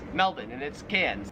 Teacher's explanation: the Australian accent just leaves the r off if it's ever in the last syllable